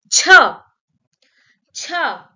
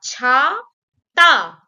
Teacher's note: when we add a strong air or a h sound in cha, it will become cha cha